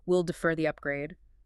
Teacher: typically a falling tone for decisions